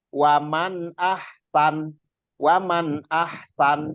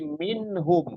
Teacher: jadi bacanya benar-benar ditegesin diperjelas gitu itu izhar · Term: izhar halqi